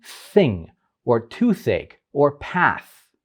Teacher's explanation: With interdental sounds, the tip of the tongue comes between the teeth